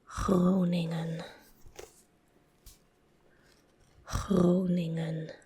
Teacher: very hard to pronounce the Dutch G followed by a R directly because they both sound kind of similar. It's in the back of the throat. Groningen. It's like a, that's the R.